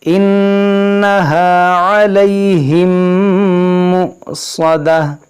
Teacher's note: شفوی کا قاعدہ لگے گا، یعنی یہاں پر غنہ کریں گے، یہ واو نہیں حمزہ پڑھیں گے، حمزہ ساکن ہے، جھٹکا ہوگا